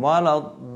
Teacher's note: Jadi panjang itu 6, bukan seperti mad wajib mutasil ya yang 5 gitu. Tapi ini 6. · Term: mad lazim musaqqal kilmi